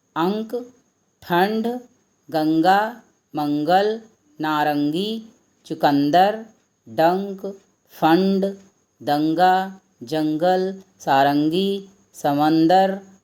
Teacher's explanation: इन सब में अंग की मात्रा लगने से इन सब का जो उच्चारण है वह कंठ से होता है। सबसे पहले यह हम जान लें कि अनुस्वार इसका उच्चारण कंठ से होता है और अनुनासिक इसका उच्चारण नाक से होता है।